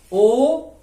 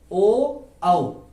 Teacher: होठ जो है उनके बनावट में बदलाव आ रहा है, वो वक्र हो रहे हैं। ओ औ, यहां हाथ रखिए, ओ औ, तो गले पर प्राणवायु जोर डाल रही है और ओष्ठ को वक्र कर रही है, इसमें बदलाव ला रही है, इसमें टेढ़ापन आ रहा है हमारे होठों पर। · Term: कंठोष्ठ